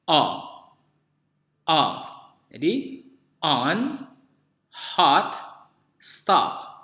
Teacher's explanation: Kalau ini bunyi O terbuka, yang mirip dengan bunyi A.